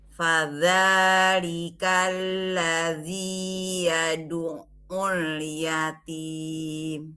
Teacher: ainnya ditahan dikit, jangan langsung diangkat